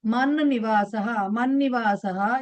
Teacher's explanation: అలాగే మత్ నివాసః తకారానికి నకారం యడ్ అయింది సో తకారం కాస్త ఆ వర్గ అనునాసికతో రీప్లేస్ చేయబడుతుంది